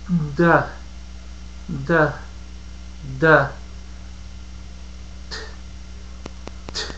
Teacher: La posición de la lengua y la forma relajada de la boca es igual para los dos sonidos. La D es sonora y su par, la T, es sorda.